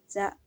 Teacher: Za ujung lidah berada di antara dua gigi seri bagian atas dan bawah. Suara mengalir tapi napas tidak mengalir.